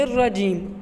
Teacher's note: اب ہم را کو پور کیوں نہیں پڑھ رہے؟ کیونکہ را کے پیچھے جو حرف ہے نون، اس کے نیچے زیر ہے، تو اس زیر کی وجہ سے ہم را کو کیا پڑھ رہے ہیں؟ باریک پڑھ رہے ہیں